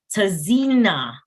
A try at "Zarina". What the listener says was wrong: My name is pronounced as Zarina. The T is silent.